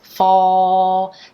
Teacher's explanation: And something interesting happens here. So fall, the dark L sound, my tongue is coming down and back for that dark L. Fall, then it's coming up, the tip of the tongue is coming up.